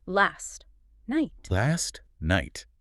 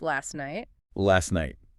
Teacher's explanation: The T at the end of last and the N at the start of night are awkward neighbors. So we just drop the T, it becomes last night.